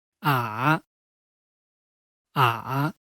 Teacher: Pronunciation is to first fall and then rise.